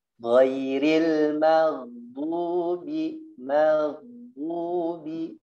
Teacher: Hati-hati gha-nya dia ngalir suaranya. Jangan dimatikan.